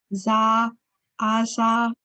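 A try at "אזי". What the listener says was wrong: Okay, it has a yud on the end, so that's going to change it. So it's not azah. You have to, the yud has a Y sound. And when you have that vowel, remember it's I.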